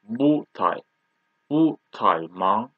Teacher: when we read bu, we should read like second tone